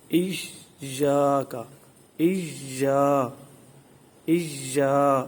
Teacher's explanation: حروف مدہ میں سے ایک حرف مدہ موجود ہے الف مدہ، لہذا اس کو دراز کریں گے۔ ایاک، اییا، اییا، یعنی یہ انگلی کھولنی ہے، جتنی دیر لگے اتنی دیر آواز جاری رکھیں گے۔